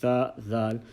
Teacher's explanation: pronounced when the tip of the tongue touches the edge of the upper front two teeth, the teeth, central incisors, as you can see, tha, dal, and letter la is also pronounced from the same place.